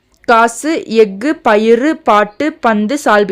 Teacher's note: சொல்லின் இறுதியில் வரும்போது ஒரு மாத்திரைக்கு பதிலாக அரை மாத்திரை அளவை ஒளிக்கும் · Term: குற்றியல் உகரம்